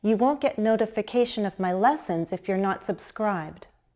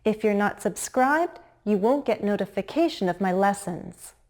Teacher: But when that if clause is first, there is a pause. You often hear a change in pitch at the end of that first clause.